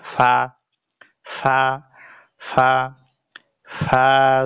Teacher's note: সামনের উপরের দুই দাঁতের আগা নিচের ঠোঁটের পেটের সাথে লাগিয়ে একটি হরফ উচ্চারিত হয়।